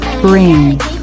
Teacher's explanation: the tongue can move back and up for the r while the lips close for the B